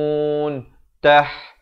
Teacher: ha pedas, makhrajnya di pertengahan kerongkong